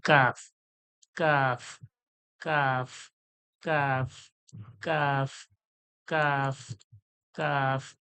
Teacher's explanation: জিহ্বার যে গোড়া, ওর একটু আগে বেড়ে উপরের তালুর সঙ্গে, জিহ্বার গোড়ার একটু আগে ওর সোজাসুজি তালু থেকে